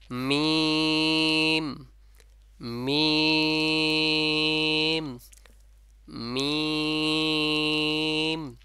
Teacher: দুই ঠোঁটের শুকনা অংশ পরস্পর মিলিয়ে হয়ে এবং নাকের ভিতর থেকে গুন্না বের হবে · মিমটা বলবেন দুই ঠোঁটে লেগে আবার উঠে যাবে আবার এসে আবার মিলিত হবে · ভিতর থেকে গুন্না বের হবে এক কথায় বাঁশির মত ঠিক আছে নাকের যে বাঁশি আছে ওখান থেকে একটা গুন্না একটা আওয়াজ বের হবে